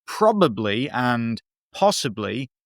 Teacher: Note too the plosive alliteration of probably, possibly. The sound is spat out in that staccato sort of way, which might reflect the quick, almost panic thinking, or even mimic the sound of gunfire popping.